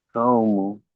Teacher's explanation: ওয়াও সাকিনের ডান দিকে জাবার আছে, একে ওয়াওলিন বলে। ওয়াওলিনকে সর্বদা নরম আওয়াজে তাড়াতাড়ি পড়তে হয়, টান দেওয়া নিষেধ।